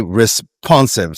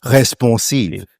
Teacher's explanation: Take any word, responsive, right? So you and I would say responsive, stress on the second syllable.